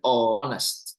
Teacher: Kalau mau bilang honest, H itu dia voiceless ya, tidak terbaca